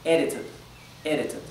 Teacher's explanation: cuando es una D sola, entre dos vocales, podría pronunciarse como una R · Entre dos vocales, la D a veces se pronuncia como una R suave, como la R española.